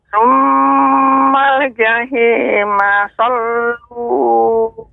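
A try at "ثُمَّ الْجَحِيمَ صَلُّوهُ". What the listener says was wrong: Jahi lebih lembut lagi Nek. Nanti terus dilatih untuk ha-nya. Ha, hi, hu.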